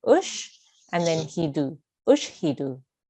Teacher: So we don't hold on the sheen for longer. We say it very simply and very softly. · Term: sheen sakin